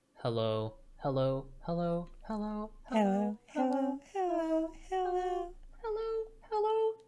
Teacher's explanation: we're going to start kind of low and heavy and then get lighter and higher